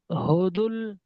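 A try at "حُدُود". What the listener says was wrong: বলে হুদুল, হুদুল টান দিচ্ছে না কেন ভাই? ওয়াও মাদ্দা তো। ওয়াও মাদ্দা কাকে বলে সব ভুলে গিয়েছেন?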